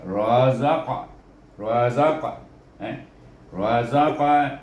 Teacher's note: Tetapi dia dimatikan dengan huruf qaf di sana. Maka qaf ini adalah huruf qalqalah, maka baca dengan qalqalah sughra